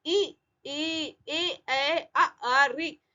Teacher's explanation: ये आवाजें आ रही है, होठ गोल नहीं हो रहा है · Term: आवर्तुल